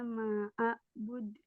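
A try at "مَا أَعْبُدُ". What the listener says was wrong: Lah, jangan ditahan. Dialirin aja. Langsung mantul. Jangan ditahan. Pantulin.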